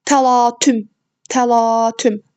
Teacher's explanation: A saiti uzanır və ikinci hecadadır. Vurğu isə 3-cü hecəyə düşür.